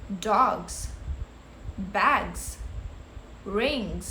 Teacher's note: in case of voiced sound, it is pronounced with a z sound.